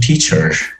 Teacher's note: you might say in american pronunciation teacher with the lingering r